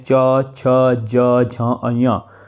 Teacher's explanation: च्वर्ग का जो उच्चारण स्थान हो जाता है वो हो जाता है तालु